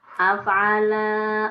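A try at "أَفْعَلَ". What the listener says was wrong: Yang pendek dipendekkan, yang panjang baru dipanjangkan. af'ala pendek, lanya jangan dipanjangkan. Kalau dipanjangkan nanti ada artinya berbeda sendiri. Jadi af'ala, af'alu. Nah, itu di elunya.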